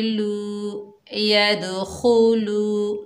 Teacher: खा को जब अदा करेंगे तो हल्के से खराटे की आवाज़ आएगी खू खू। लाम के ऊपर पेश, आगे वाव साकिन है, ये वाव मद्दा है, एक अलिफ की मिकदार खींच कर पढ़ेंगे